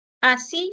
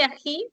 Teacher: Esa S es fricativa alveolar sorda. En el caso de ají tenías la fricativa, pero era fricativa velar sorda.